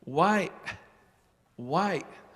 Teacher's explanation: It's like the question why, but it has a little glottal stop on the end. A glottal stop is like the English word uh-oh.